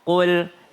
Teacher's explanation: Kul dia lebih dalam tenggorokan. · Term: qaf